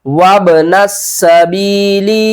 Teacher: نون کو سین کے ساتھ ملائیں گے، سین کے اوپر سختی کریں گے، اس الف اور لام کو نہیں پڑھیں گے